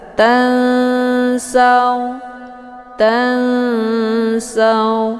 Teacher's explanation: nunnya disamarkan kemudian siap-siap menuju ke huruf sa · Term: ikhfa awsat